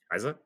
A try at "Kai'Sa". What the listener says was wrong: A little more emphasis on the S. Kaisa.